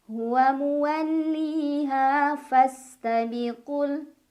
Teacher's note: Muwalliha, ha juga mad tabi'i. Karena ada alif sebelumnya fathah, cara membacanya dipanjangkan 2 harokat.